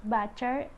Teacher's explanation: Ch is voiceless alveopalatal affricate